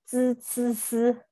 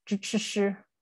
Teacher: the dental that I'm referring to is the sound of z z z, and the retroflex is what I refer to as zh zh zh